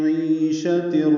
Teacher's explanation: میں عی یا مدہ ہے، یہ بھی 2 حرکات لمبا ہے، عین وسط حلق سے ادا ہوگا اور یہ یا مدہ مد اصلی ہے، شین کو جلدی پڑھیں